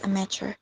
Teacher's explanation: the word is a noun that has stress at the beginning